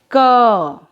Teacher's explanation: बच्चों, व्यंजन क का उच्चारण करते समय हमें दो ध्वनियां सुनाई दे रही हैं।